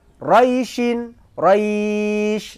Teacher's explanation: namanya madlin panjangnya boleh satu dua atau tiga Alif